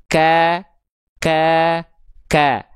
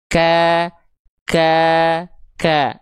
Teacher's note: Ketika melafalkan huruf kaf, pangkal lidah kita naik.